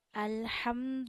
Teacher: इस खड़ा जबर को वन फिंगर जितना खींचा जाता है हम इस खड़ा जबर को पढ़ते हुए वन फिंगर जितना खींचें